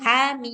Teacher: Karena h-nya dua harakat. Mim enam harakat.